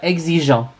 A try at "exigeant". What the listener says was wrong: Ah, don't pronounce the N. Wait, don't pronounce the N.